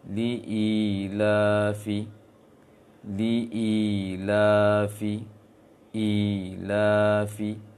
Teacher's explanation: Yang pertama di ila, i dengan la sama panjang biasa. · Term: mad biasa